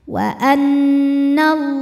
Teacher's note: Allah ini lam jalalahnya dibaca secara tafkhim karena harokat huruf sebelumnya fathah. Cara bacanya adalah tebal.